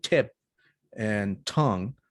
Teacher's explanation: i can feel the tip of my tongue touching the alveolar ridge